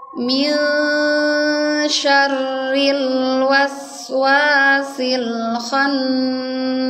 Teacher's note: Nah, di sini di ayat yang pertama ada nun sukun ketemu dengan shin. Nah, nunnya ini jangan dibaca jelas ya. Ini harus samar dan juga harus ditahan. Karena ikhfa ini masuk ke hukum guna.